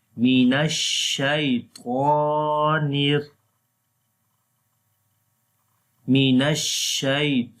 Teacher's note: make sure to spread the sound of sheen into your mouth